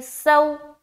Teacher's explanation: ये वाव लीन हो गया। नरमी के साथ जल्द अदा करेंगे।